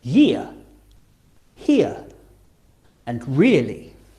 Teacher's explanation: as you say ear, your mouth should open a little bit, starting on the I and finishing on the ear.